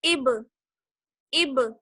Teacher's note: اسی طریقے سے حمزہ با زیر اب. آواز بند نہیں ہوگی جیسے اب نہیں، آواز کو لوٹال کے لائیے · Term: قلقلہ